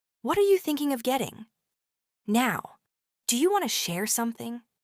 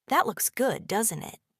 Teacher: Notice how your tone rises a little at the end of the questions.